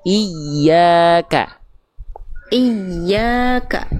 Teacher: Iya, tapi dia bertasydid itu teman-teman sekalian, dia ada cara baca namanya naber. Naber itu dia ditekan makhrajnya lebih kuat sehingga nadanya lebih tinggi. Jadi bukan dibaca cuman iya, tapi tekan makhraj ya-nya di mana tengah lidah ke atas. · kalau kita neken ya-nya, otomatis dia akan lebih naik nadanya. Iya, itu kita gak lagi naikin nada, tapi kedengarannya lebih naik nadanya.